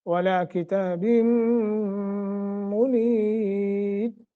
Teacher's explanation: میم مشدت ہے، یہاں بھی غنہ کریں گے، ولا کتاب منیر، را باریک ہوگا چونکہ را ساکن ہوگی ہے، ما قبل یا ہے